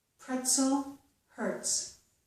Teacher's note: However, if the letter Z follows the letter T in a word, so we have T plus the letter Z, we usually get the S sound, as in the words pretzel and hurts. So the Z's here are not making a Z, they are making a S.